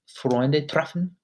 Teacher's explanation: You really want to roll your tongue when you say treffen. It should be quick.